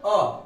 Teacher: मध्य स्वर यानी बीच के जो स्वर हैं उसमें बोला जाता है बीच जीवा से अ